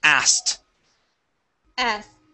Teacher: instead of pronouncing the K, we're going to skip over it.